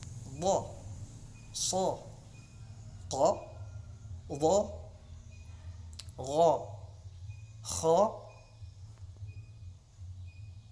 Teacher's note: dengan mengangkat pangkal lidah atau lidah ke langit-langit bagian atas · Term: huruf isti'la